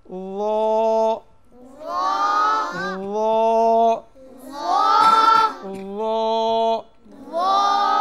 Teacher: 13 নম্বর মাখরাজ, 13 নম্বর মাখরাজ। জিব্বার আগা, সামনের উপরের, দুই দাঁতের আগার সঙ্গে লাগিয়ে, তিনটি হরফ উচ্চারিত হয়।